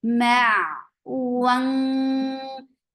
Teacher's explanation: For wow circle your lips, fatha open your jaws and bring heavy ikhfa here because za is among heavy letters. Heavy ikhfa is created by lifting your tongue up.